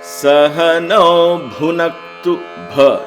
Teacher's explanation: Okay, it's Mahaprana there. There is an emphasis on the word bha.